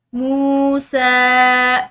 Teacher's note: سین پر کھڑی زبر ہے تو اس کو ایک الف کی مقدار کھینچ کر پڑھیں گے۔